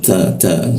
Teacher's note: ketika baca ta itu ada hembusannya